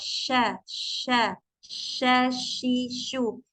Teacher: Jadi ketika mengucapkan huruf shin, makhrajnya huruf shin itu kan ada di tengah lidah ya dengan langit-langit. Tapi dia itu nggak menempel ya. Si tengah lidahnya itu nggak ditempelkan ke ujung ke langit-langit sya enggak. · Di setiap kondisi mau dia sukun, mau dia fathah, kasrah, dhammah, ash atau sya, shi, shu akan ada udara yang menyebar memenuhi mulut kita ketika mengucapkan huruf shin